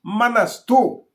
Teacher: मनस्तु आधा दंत स हो जाएगा